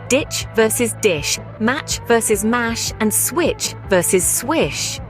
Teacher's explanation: Remember, the ch sound is more forceful, while the she sound is softer.